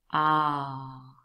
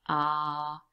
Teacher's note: that sound is really produced right at the back of your mouth ah and your mouth is wide open and the tongue is